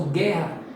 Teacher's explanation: Esse GU, você não pronuncia o U